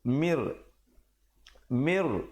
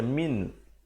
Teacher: di situ nun mati bertemu ra. Idgham bila gunnah. Masuk tanpa dengung. Asalnya mim baris bawah bertemu nun bunyi min.